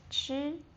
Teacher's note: the first tone, high and flat